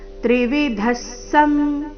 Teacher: ತ್ರಿವಿಧ ನಂತರ ವಿಸರ್ಗ ಉಚ್ಚಾರಣೆ ಅರ್ಧ ಸ ರೀತಿ